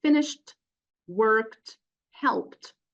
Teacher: the pronunciation of the past um the regular past Ed that if it occurs after certain voiceless consonants the D will be T